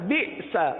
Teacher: آخر میں سین زبر سا پر جھٹکا نہیں ہوگا